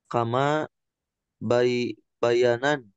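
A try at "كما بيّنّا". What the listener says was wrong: kama bayanna pakai tasdid.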